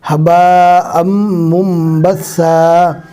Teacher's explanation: منبثا نہیں پڑھنا، نون کو نہیں پڑھا جائے گا، جزم والے نون کے بعد با آ گیا، لہٰذا جزم والے نون کی جگہ میم پڑھا جائے گا